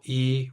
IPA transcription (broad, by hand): iː